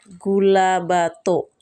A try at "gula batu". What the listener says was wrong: Gula batu bukan batok. Batu. Batu bukan batok, batu. teh gula batu. Gula batu bukan gula batu bukan gula batu.